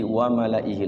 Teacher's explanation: Malaihi di situ la-nya panjang dibaca pendek.